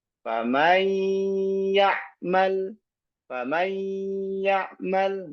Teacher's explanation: Tatkala kita mengucapkan nun sakinah bertemu dengan ya, maka masih menyisahkan sifat gunnah dari huruf nun tersebut. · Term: idgham naqis bi gunnah